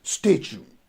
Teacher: So the stress goes on the first syllable